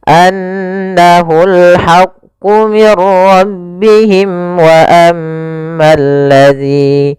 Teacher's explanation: Tapi ketika kita bersambung maka di sini ada bacaan izhar syafawi. Yaitu membacanya suara mimnya harus dibaca dengan jelas